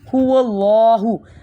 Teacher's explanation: یہ والا جو ہا ہے 2 آنکھوں والا، اس کو ہم حلق سے نہیں نکالتے، یہ سیدھا منہ سے آپ کی جو سیدھی آپ کے الفاظ ہیں نکلتے ہیں، هو اللہ۔ · جب بھی اللہ لفظ سے پہلے فتح ہوگی، زبر ہوگی تو ہم اللہ کو پر کرتے ہیں